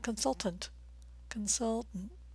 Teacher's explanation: stressing the second syllable the vowel sound as in mustard and the T's are a bit reduced